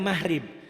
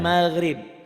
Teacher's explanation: kalau orang Jawa G-nya ke ho